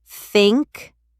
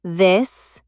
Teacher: For thank, it is a soft breath. For this, you use your voice. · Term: TH sound